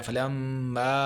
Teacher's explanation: غنہ کرنا ہے، ناک پہ آواز لے کے جانی ہے، ہم پہ اخفا کرنا ہے۔